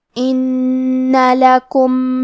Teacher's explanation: نون پہ تشدید ہے تو ہم دو حرف کے برابر نون کو پڑھیں گے